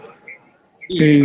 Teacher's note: तुम बी बोलोगे तो तुम्हारे होठ आपस में बंद हो जाएंगे दोनों